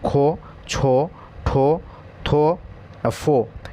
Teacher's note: যে ধ্বনি আছে এই লিস্টটা আমরা দেখতে পাব মহাপ্রাণ ধ্বনি কারণ এগুলো উচ্চারণ করার সময় আমাদের শ্বাসবায়ু অনেক বেশি ব্যবহার করি